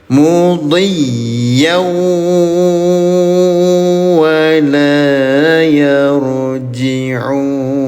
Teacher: Tempelkan bunyi tanwinnya ke huruf wau disertai dengung selama dua harakat. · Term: idgham bighunah, idgham bi ghunah